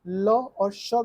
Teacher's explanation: ल और श का उच्चारण स्थान दंत से होता है।